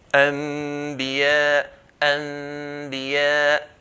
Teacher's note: The word Anbiya is in 2 words. So Nun meets a Ba. The Nun will change into a Mim.